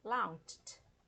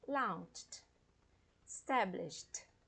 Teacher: Launched. Esse CH é um som surdo, né? Não tem uma vibração das cordas vocais.